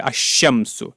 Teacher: شمسی ہے، تو الف لام لگانے سے الف لام لگانے پر لام کو یہاں نہیں پڑھا جاتا، بلکہ لام کے بعد جو حرف ہے شین اس پر تشدید دی جاتی ہے ، تشدید کے ساتھ پڑھا جاتا ہے الشمس۔ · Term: حروف شمسیہ